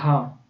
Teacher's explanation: तो घा का उच्चारण स्थान कंठ हो जाएगा